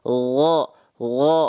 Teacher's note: mengalir nafas sedikit mengalir nafas dia kalau k k k k tapi kalau huruf Gin enggak pakai nafas